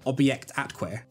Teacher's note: there's an almost involuntary gulp as you cross the bridge between the two words